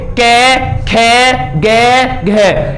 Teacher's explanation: इनमें से कोई सा भी आप अक्षर बोलिए तो आपको इस कंठ से बोला जाएगा किस इस वाले कंठ से बोला जाएगा आप चाहे बोल कर